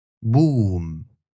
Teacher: Arabic will consistently use just one pure oo